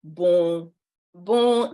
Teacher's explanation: The letter N at the end of bon is silent. So it's an N that has a circumflex or a dash above it, demonstrating or denoting that it is a silent N.